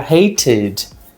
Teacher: Study termina com Y, mas a última consoante que aparece é um D. Então, esses casos, o de uma consoante T ou D, eu vou ter de fato o ED sendo pronunciado com o som de ed